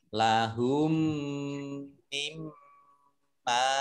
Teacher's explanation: Aslinya min dan ma. Maka di sini mimnya ada tasdidnya, dibaca gunnah atau mendengung, ditahan 2 harokat.